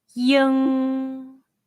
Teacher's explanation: it's like the sound of ing in the english word king but the g sound is barely pronounced